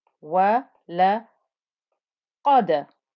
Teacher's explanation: Remember to make the qaf thick and heavy. Qaf is a lovely thick heavy letter right from the back of the tongue.